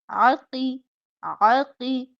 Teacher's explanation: ऐन हलक के वस्त से